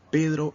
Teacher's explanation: nos damos cuenta que en la palabra Pedro la mayor fuerza de voz está en la primera sílaba